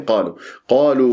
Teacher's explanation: القاف هنا مفخمه مرتبه اولى لانها مفتوحه بعدها الف تفخم الالف تبعا للقاف